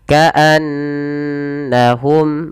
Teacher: ada bacaan ghunnah, bunyi n ditahan